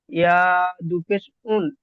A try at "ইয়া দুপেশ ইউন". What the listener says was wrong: উন নয়, ইউন।